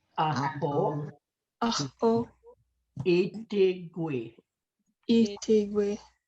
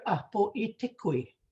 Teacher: They might Apo itigui. pronounce it as a K, k, instead of a G sound